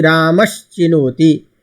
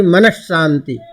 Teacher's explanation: शांति में श। तो शांति का श तालव्य के योग होने के कारण मनस के स को हम श में बदल देंगे